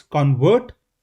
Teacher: And in the very same way if you see the stress pattern analysis it's convert convert the stress is on the first part